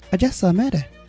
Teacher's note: Just and mere are the most stressed syllables there.